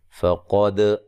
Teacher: قاف کو موٹا ادا کرنا ہے، دال کو ہلا کے پڑھنا ہے، یہ قلقلہ ہے